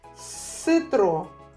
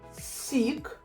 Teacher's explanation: Сашко полюбляє напої в назві яких є твердий звук с а Івась напої в яких є м'який с